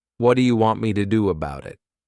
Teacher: all we're doing is, we're not pushing out that T sound. This is called a flat T